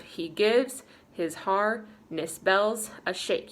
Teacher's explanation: ending on a downbeat or ending on a stressed syllable. Shake is more stressed.